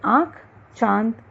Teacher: अनुनासिक, इसका उच्चारण नाक तथा मुंह से होता है।